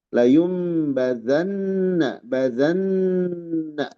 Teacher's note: Di pada nun bertasdid ada gunah. Maksudnya ini layumbanna badanna ditahan ya.